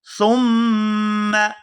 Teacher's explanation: یہاں سا کو نرمی کے ساتھ ادا کرتے ہوئے میم مشدد کے ساتھ ملائیں گے تو یہاں غنہ کریں گے